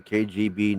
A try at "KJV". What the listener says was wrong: Not G, J. KJV. Yeah, you said